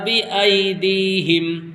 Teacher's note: یہاں پر ای جلدی پڑھا جائے گا کیونکہ یہ یالین ہے، یا ساکن سے پہلے حرف کے اوپر زبر آیا ہے تو یہ یالین ہوگا اور یالین کو جلدی پڑھتے ہیں